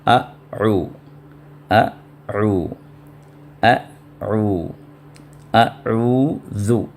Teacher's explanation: تو حمزہ یا آخری حلق سے نکلتا ہے، اور عین اس سے اوپر درمیانی حلق سے نکلتا ہے، وسط حلق سے، تو دونوں کے ساؤنڈ میں فرق ہونا چاہیے۔